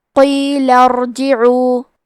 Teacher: یہاں را کا حکم ہے تفخیم تو ہمیں حرف الراء کو موٹی آواز میں پڑھنا ہے